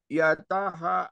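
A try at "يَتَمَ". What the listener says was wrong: Yatama. Mim ini mah bukan H. Yatama.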